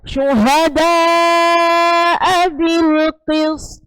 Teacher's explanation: poknya itu harus dibaca jelas dan juga mantul karena itu apa? Qalqalah ya, qalqalah kubra.